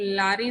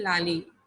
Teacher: cannot say ra, so they'll say la